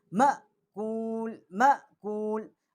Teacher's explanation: اس کو ہم ایسے پڑھیں گے جیسے یہ حمزے کی آواز ہے، اور تھوڑا سا مقصد ہے یہ جھٹکے سے پڑھیں گے مَأْکُول مَأْکُول، کیونکہ اس کی یہ جزم کی وجہ سے یہ